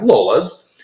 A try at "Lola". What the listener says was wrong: No, you can't add the S on there. No, you can't add the S on there.